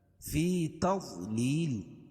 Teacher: فی یا مدہ یا ساکن سے پہلے زیر ہے اس لیے یا مدہ، فی تضلیل ضاد کو موٹا پڑھیں گے کیونکہ حروف مستعلیہ میں سے ہے، اور لیل یا ساکن سے پہلے زیر ہو تو یا مدہ، اور وقف کی صورت میں یہاں دو زیر کی تنوین کو جزم سے بدل دیں گے، یہاں تو مد عارض وقفی ہوگا۔